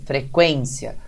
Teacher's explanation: Começou pela semivogal, que é o som mais fraco, e foi para a vogal, certo? Então, você teria um ditongo crescente.